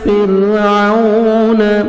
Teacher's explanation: را ساکن سے پہلے زیر ہے, را کو باریک پڑھیں گے